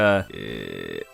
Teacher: sound like a low creaky door opening from the back of your throat